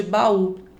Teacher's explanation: hiato eu tenho aí duas vogais, uma ao lado da outra, que quando eu separo a sílaba, cada uma fica em uma sílaba